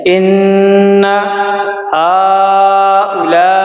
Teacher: اس بڑی مد کو ہم 5 الف کے برابر کھینچیں گے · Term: مد طول